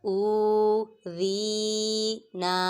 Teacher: حمزہ واو پیش او، ذال یا زیر ذی، او ذی، نون الف زبر نا، او ذی نا، حمزہ پہ واو مدہ، ذال پہ یا مدہ اور ذال کو نرمی سے ادا کریں گے، سیٹی کی آواز نہیں نکالیں گے، اور نون پہ الف مدہ، ان تینوں کو ایک الف یعنی 2 حرکات کے برابر کھینچ کر پڑھیں گے۔